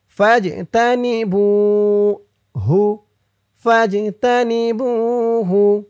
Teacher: বু একালিফ টান, পেশের পরে ওয়াও সাকিন।